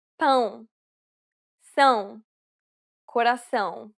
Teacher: It is similar to the ow sound in English, but with nasality. Saying the word pound repeatedly may sometimes help with pronouncing the sound.